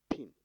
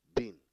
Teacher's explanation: Pin for P, that is plosive, voiceless, bilabial, and bin for B, that is voiced, plosive, bilabial.